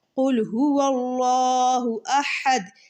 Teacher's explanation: حمزہ اور ہا سینے کی طرف سے ادا ہوتے ہیں